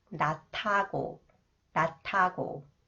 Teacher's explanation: the sounds of the final consonants 지읒 is changed to 디귿 sound, not. And then combined with 히읗, it is pronounced 트 sound, 낮하고, 낮하고.